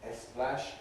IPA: eˈsplæʃ